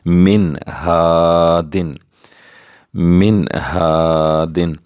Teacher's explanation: نون ساکن کے بعد ہا حروف حلقی میں سے آ گیا ہے، یہاں ہم اظہار کریں گے، غنہ نہیں کریں گے، رکیں گے نہیں، بلکہ جلدی سے پڑھیں گے.